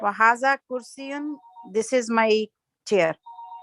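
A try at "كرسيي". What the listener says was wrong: No, kursiyi. It has a ya at the end. Kursiyi.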